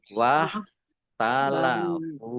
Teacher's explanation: kho di tenggorokan suaranya.